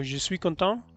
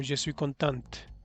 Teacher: Al pronunciar la T, lo estás diciendo en femenino.